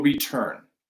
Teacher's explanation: That is a hard T because that vowel sound, right, that syllable, turn, return, is stressed.